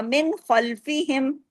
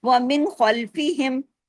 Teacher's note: اظہار ہلکی ہوا، کوئی غنہ نہیں ہوا، کہیں آواز تبدیل نہیں ہوا